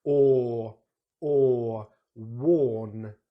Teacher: we make that sound by really rounding the lips, pushing them right out and tongue back. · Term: OR sound